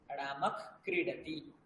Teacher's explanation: বিসর্গের খ হয়ে যাওয়াকে বলা হয় জিহ্বা মূলীয়ঃ